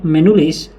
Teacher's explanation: Sebagai contoh dalam pembentukan kata menulis fonem t pada kata dasar tulis mengalami peluluhan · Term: peluluhan fonem